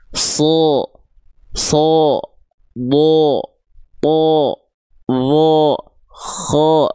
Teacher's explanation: Huruf-huruf tebal tuh ketika dia berharakat fathah kan bunyi vokalnya O seperti O maksud saya.